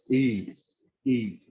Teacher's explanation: Neither E nor A, in between sound.